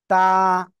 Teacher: আগা উপরে দুই দাঁতের গোড়ার সঙ্গে লাগিয়ে এক আলিফ টেনে পড়বো তা কেউ যেন আবার ত এমন উচ্চারণ করেন না এটা কিন্তু